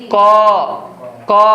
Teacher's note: তুমি ক উচ্চারণ করতে দেখো, ক একদম কণ্ঠ থেকে